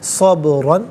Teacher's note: با ساکن ہے لیکن حرف قلقلہ ہے تو آواز لوٹتی ہوئی محسوس ہونی چاہیے